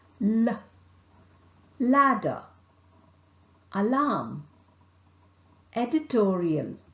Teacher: L is articulated by allowing the tongue tip and the sides of the tongue blade to make firm contact with the teeth ridge. The center of the mouth is obstructed. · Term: lateral consonant